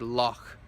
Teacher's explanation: You can find it somewhere between the sound in the back of your throat and the sh sound in the front of your mouth. It's up in the middle. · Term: CH sound